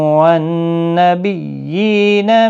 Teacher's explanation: نون مشدد پر غنہ ہوگا، تشدید والے حرف کو سختی کے ساتھ ادا کریں تاکہ تشدید ظاہر ہو۔